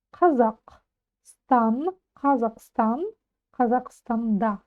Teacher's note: ударение на последний слог